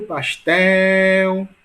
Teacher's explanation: a sílaba mais longa, tel, portanto, é a sílaba mais forte